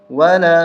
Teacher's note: واو زبر و، لام الف مد زبر لا، ولا 3 الف تک کھینچیں گے، چھوٹی مد ہے